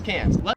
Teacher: the Australian accent just leaves the R off if it's ever in the last syllable of a word